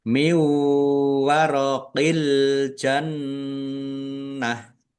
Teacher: Nun sukun bertemu dengan huruf wau, idgham bi gunnah. Masuk dengan mendengung, yaitu mendengung wau. Ditahan biar tampak mendengung.